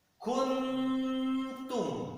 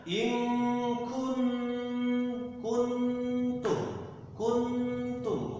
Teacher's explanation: Jadi ketika kita mengucapkan kun, si lidah sudah siap-siap mendekati mengucapkan tak. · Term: ikhfa